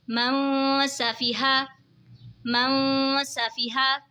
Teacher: نون ساکن کے بعد حروف اخفا کا سین آ رہا ہے تو اخفا ہوگا یعنی غنہ کر کے پڑھیں گے